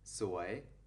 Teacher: we still use the rising tone for the word soy